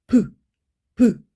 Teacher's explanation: 파열음은 말 그대로 파열, 막혔다가 터지는 거예요. 공기가 살짝 막혔다가 브, 입술 부분에서 터지면서 나는 소리고요.